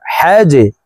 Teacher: তিনটি হরফের ভিতরে একটি হরফ জিম। তাই এই জিমকে নিচের দিকে ধাবিত করে ধাক্কা দিয়ে অর্থাৎ কলকলা করে উচ্চারণ করব